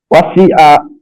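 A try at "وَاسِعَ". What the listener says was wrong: জি, আইনটা একটু মোটা হবে, ওয়াসি আ।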